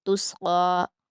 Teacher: قاف کو پر پڑھیں گے، سین کو باریک